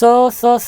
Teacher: कंपन नहीं होता है घर्षण होता है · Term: अघोष